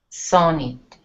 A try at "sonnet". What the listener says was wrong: No, because I'm hearing zonnet. But again, I'm hearing the E instead of the I. I like lick. I like sick. Say knit.